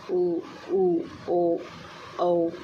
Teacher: जिन स्वरों के उच्चारण में हो वृत्त मुखी या गोलाकार होते हैं वृत्त मुखी स्वर कहलाते हैं।